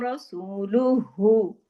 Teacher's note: कुमुल्लाहु व रसूलुहु, इसमें देखिए व रा मोटा, सूल व रसूलुहु, सू को हमने दो हरकत खींचा वाव मत्ता की वजह से